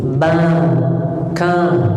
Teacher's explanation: Sebagian orang dari Syam seperti Suriah, fathahnya itu sering pakai hidung